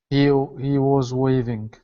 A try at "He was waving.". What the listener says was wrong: Okay, make sure to pronounce that H sound. He.